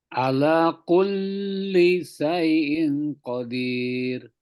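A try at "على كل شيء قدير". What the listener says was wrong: Oke, mahraj shinnya. Shinnya coba monyong.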